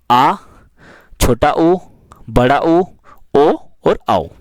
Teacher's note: जिन स्वरों के उच्चारण में जीभ का पश्च भाग मदद करता है उन्हें पश्च स्वर कहते हैं।